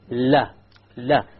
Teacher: the letter lamb or la originates from the front edge and not the tip